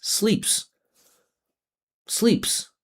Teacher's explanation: because p is voiceless, we're just going to make it plural by adding the voiceless s. Sleeps.